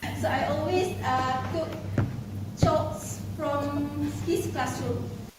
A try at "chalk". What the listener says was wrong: Um, the way she pronounced chalk, it is a pronunciation that makes the audience confused between chalk or choke.